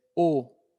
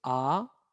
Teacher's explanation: pueden ver que cuando dicen oh es muy cerrado cuando dicen ah es muy abierto